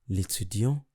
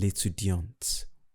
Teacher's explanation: For the masculine, I didn't pronounce the T. While for the feminine, I pronounce the T.